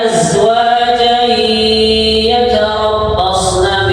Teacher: ini namanya idgham. Nah, mendengungnya dua harokat.